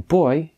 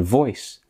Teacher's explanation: instead of pronouncing beta like b as in boy you pronounce it as v as in voice